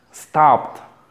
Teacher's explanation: La A relajada. La A abierta, cuyo sonido se produce acá.